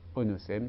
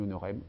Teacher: Le S intervocalique est devenu R. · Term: rotacisme